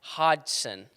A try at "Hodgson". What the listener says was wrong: There's no G. Yeah, exactly. It's hot. H-O-D. Apparently the G is silent.